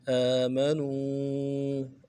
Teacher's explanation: فَأَمَّا الَّذِينَ آمَنُوا، حمزہ کے اوپر کھڑا زبر ہے، ایک الف دار میں کھینچیں گے، میم کو نون سے ادا کریں گے. نو میں واو مدہ ہے، واو مدہ کو بھی ایک الف دار میں کھینچیں گے